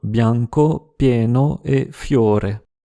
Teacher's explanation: le son [l] est devenu [j] après une consonne et avant une voyelle